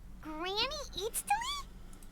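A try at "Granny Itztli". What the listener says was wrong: But emphasis on Eatstly, not Granny.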